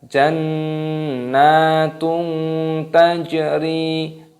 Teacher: dhammah tanwin bertemu dengan huruf ta, hukumnya dibaca ikhfa. Ikhfa itu artinya samar, jadi cara membacanya disamarkan.